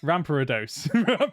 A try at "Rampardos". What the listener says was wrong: I'm like, where's the A come from?